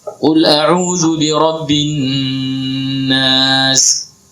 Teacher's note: Di an-nas itu ada nun bertasydid, maka wajib gunnah. Ya, wajib berdengung di situ.